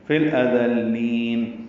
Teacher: لام ساکن پہ اظہار، حمزہ جلدی اقصی حلق سے ادا کریں گے